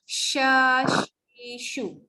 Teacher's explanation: Angin keluar bersama lidah tu tengah-tengah naik ke atas. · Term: tengah-tengah lidah